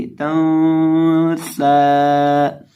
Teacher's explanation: इख्फा होगा और गुन्ना होगा, यानी इसकी नून की आवाज़ को नाक में गुनगुना कर पढ़ेंगे